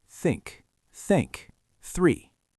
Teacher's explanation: The voiceless th. This is the breath sound.